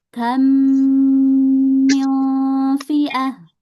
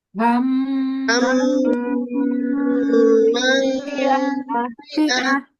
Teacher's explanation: yang kamnya harus lebih panjang tempo gunnahnya